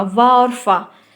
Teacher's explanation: इन वर्णों का उच्चारण करते समय ऊपर के दांत और नीचे के ओठ का प्रयोग होगा, वा और फा। आप बोल कर देखिए, ऊपर का जो दांत है वो और नीचे का ओठ, इन दोनों के मिलने से आपका ये दंतोष्ठ का उच्चारण होगा, जिसमें वा और फा आ रहा है।